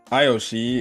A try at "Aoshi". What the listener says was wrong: Aoshi, not Ayoshi.